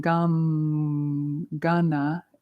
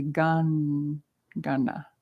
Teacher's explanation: Ganapati, and that just means it's a Sandhi rule, which is a connector rule. The M before the following G, instead of saying Gam, Gana, it's just a more natural sound to say Gan, Gana.